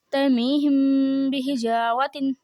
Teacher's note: میم ساکن کے بعد حرف با آ رہا ہے، تو یہاں پہ اخفا شفوی ہوگا. اخفا شفوی میں ہم نے غنہ کرنا ہے